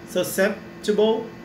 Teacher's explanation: Susceptible, então susceptible, eu até separei aqui a transcrição fonética, susceptible, para ficar bem mais fácil de pronunciar, né? Então e o P ele não é pronunciado, mas você dá uma pausa, então fica susceptible.